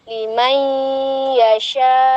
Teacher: Maksudnya idgham bi gunnah kategori naqisoh, di mana masih menyisakan gunnah daripada huruf sebelumnya yaitu nun sukun.